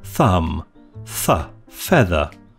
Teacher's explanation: dental fricatives made by disrupting the air flow through a narrow channel formed by the tip of the tongue and the top front teeth to cause turbulence